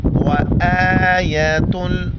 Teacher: حمزہ کے اوپر کڑا زبر ہے، ایک الف کی مقدار کھینچیں گے